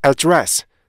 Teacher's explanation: 그런데 이게 속도가 점점 빨라지잖아요. 그러면은 맨 앞에 부분에 강세를 받지 못하는 에 부분이요. 더 약화가 돼요.